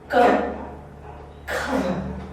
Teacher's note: You're really stopping it short in your throat. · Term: pure k